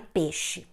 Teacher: Esse seria um processo de monotongação, né? Esse ditongo se transforma numa vogal única, o E.